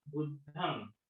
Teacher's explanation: न चा उच्चार झाला पाहिजे, म चा नाही. दोन्ही होठ एकमेकांना टच होता कामा नये. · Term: नाकातून आलं पाहिजे